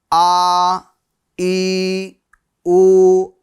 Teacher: ایک الف کی مقدار کھینچیں گے حروف مدہ کی طرح